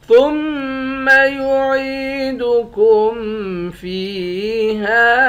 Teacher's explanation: ثا کو میم مشدد کے ساتھ ملا کر میم پر غنہ کریں گے، عین کو یا کے ساتھ ملا کر یا کو ایک الف کے مقدار کھینچیں گے، فا کو یا کے ساتھ ملا کر یا کو بھی ایک الف کے مقدار کھینچیں گے، ہا کے بعد الف ہے، الف حروف مدہ ہے، ایک الف کے مقدار کھینچ کر پڑھتے ہیں۔